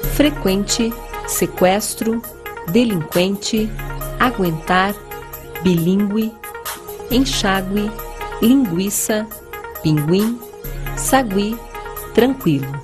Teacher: Mas atenção para o seguinte, embora o trema não seja mais usado, a pronúncia das palavras que recebiam o trema continua a mesma. Ou seja, devemos continuar pronunciando a letra U.